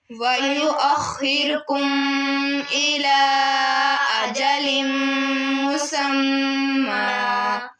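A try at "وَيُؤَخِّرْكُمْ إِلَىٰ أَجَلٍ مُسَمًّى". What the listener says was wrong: आपने लफ्ज़ बोला है वयुअख़्खिरकुम के ऊपर गुन्ना की है, कुम के ऊपर गुन्ना नहीं करना, कुम के ऊपर गुन्ना नहीं करना आपने, क्योंकि कुम के आगे बा नहीं है।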